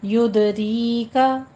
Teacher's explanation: دال پہ قلقلہ کر کے آگے یا مدہ کھینچ کے پڑھنی ہے، ہونٹوں کو پست کرتے ہوئے